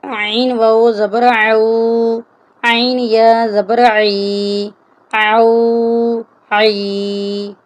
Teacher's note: عین بھی حروف حلقی ہے اس لیے ہم عین کی بھی حلق سے ادائیگی کریں گے۔